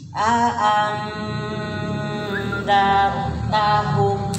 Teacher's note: IFA itu dibacanya samar dan dengung, ya. Samar dan dengung. Nunnya samar, kemudian didengungkan, ya. Jadi didengungkan, enggak hanya samar saja, tapi didengungkan.